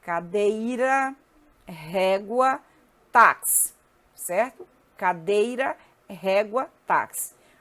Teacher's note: Paroxítona, penúltima. A sílaba tônica é a penúltima.